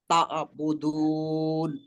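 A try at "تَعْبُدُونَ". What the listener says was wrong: মানে এক একটা পৃথক পৃথক শব্দ শব্দ শোনা যাচ্ছে আপনার জন্য বেশি, ওকে সমস্যা নাই, ওকে একটু ট্রাই করবেন, ইনশাল্লাহ এটা হয়ে যাবে।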